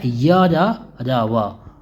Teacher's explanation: इनका उच्चारण जीभ, तालु, दांत और ओठों के परस्पर सटाने से होता है, किंतु कहीं भी पूर्ण स्पर्श नहीं होता है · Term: अंतस्थ व्यंजन